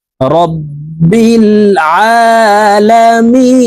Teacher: তিন আলিফ টেনে নুনকে সাকিন করতে হবে